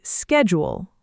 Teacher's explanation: Americans say schedule with a hard K sound. >> And British speakers say schedule with a soft SH sound at the beginning.